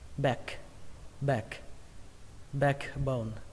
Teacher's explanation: các bạn có thể đọc thành âm a bẹt, nghĩa là âm giữa a và e, nghe giống như âm e